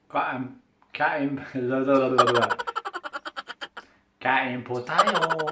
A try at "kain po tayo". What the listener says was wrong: Not tayo, because T is English. Ta, as in Tagalog, tayo. Kain po tayo.